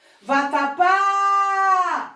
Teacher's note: Viu? A última sílaba foi a mais longa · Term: palavra oxítona